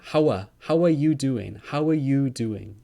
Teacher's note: how are you doing you gets very long · Some common features of the Welsh accent is that we use our vowels a lot. We make our vowels very long.